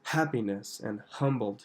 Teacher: She really aspirates that H at the beginning of the word.